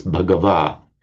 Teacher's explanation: It's the stem mant becomes man or van. It remains the same in Pali, save that the final n drops off, which gives us bhagava.